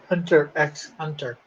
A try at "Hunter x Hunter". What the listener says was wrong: You're not supposed to pronounce the X. For some reason. Apparently it's just Hunter x Hunter.